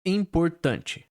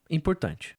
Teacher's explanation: Tan é a sílaba mais forte, né? A sílaba tônica.